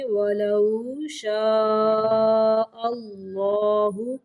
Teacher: اللہ کا لام موٹا پڑھیں گے